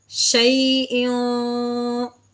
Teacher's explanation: اخفا کا غنہ کریں گے۔ ہاں جی، اخفا کا غنہ جو ہے بالکل صاف واضح سنائی نہیں دیتا